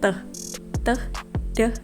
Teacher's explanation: Coba teman-teman praktek membunyikan teh, deh gitu kan. Itu kan ada sedikit dorongan poin antara bertemunya titik lidah dengan gigi bagian atas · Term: alveolar sounds